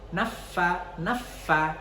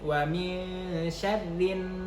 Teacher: Nah, fa, ketika fa bertasydid kita menekan jadi naffa begitu. Tapi kalau seandainya dia nun, wa min syarrin, dia gunnah.